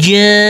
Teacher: Huruf jim di sini kita baca kurang lebih 4 sampai 5 harakat.